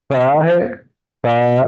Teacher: हमने जुबान को दो दांतों के दरमियान नोक उसकी रख देनी है और फिर अदा करना है